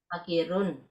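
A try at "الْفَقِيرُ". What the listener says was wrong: Fakiru. Udah ada al.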